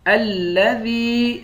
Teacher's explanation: ذال کو یا کے ساتھ ملا کر یا کو ایک الف کی مقدار کھینچ کر پڑھیں گے